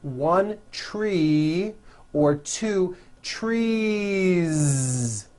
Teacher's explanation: So what you want to do if you're going to add an S to a word like this to make it plural is you continue the voicing throughout the whole word and add on a voiced Z